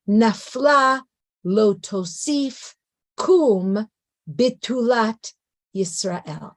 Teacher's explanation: the first part of the sentence has three stressed syllables the second part of the sentence has only two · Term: lamentations meter